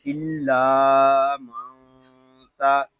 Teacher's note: यहाँ नून साकिन है, इसको सुकून के साथ अदा करेंगे। यहाँ नून साकिन में इख्फा हो रहा है।